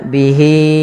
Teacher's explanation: h-nya wajib kita banyakkan sepanjang empat harakat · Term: mad silat tawilah